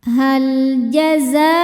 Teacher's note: Lam sukun dibaca secara jelas namanya lam mutlak. Ketika ada lam sukun tidak menghadapi huruf lam lagi atau huruf ra.